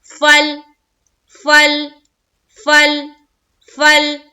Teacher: تو ہمیں یہاں پر قلقلہ نہیں کرنا ہے. گویا ہماری آواز لام کے مخرج کے اوپر رک جانی چاہیے.